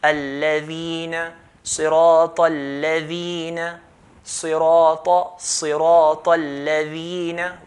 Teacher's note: Ya has a sukoon, preceded by letter there's a kasr, we're not stopping that word, then we're going to stretch the dhal to 2 counts.